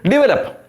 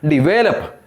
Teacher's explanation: second syllable should be given the stress